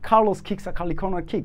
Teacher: যত ক আছে সকল ক কে আজকে থেকে খ বানিয়ে দিব